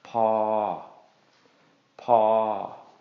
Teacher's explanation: low plus long equals long midtone. So this is going to be pronounced as paw, paw.